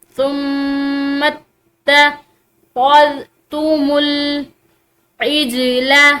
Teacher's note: میم مشدد پر غنہ کیا جاتا ہے۔ اب یہ میم مشدد پر غنہ کے ساتھ ساتھ یہ اس اگلے حرف یعنی کہ تا کے ساتھ مل رہا ہے، تا بھی مشدد ہے۔